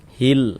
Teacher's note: Maksudnya dibaca jelas tuh maksudnya dibaca izhar itu huruf lamnya dibaca jelas, ada tanda bacanya. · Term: idhar qamariyah